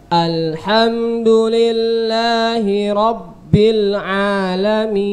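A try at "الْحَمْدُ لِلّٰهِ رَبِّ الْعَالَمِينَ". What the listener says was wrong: Coba bilnya antum sempurnakan lagi. Bil coba.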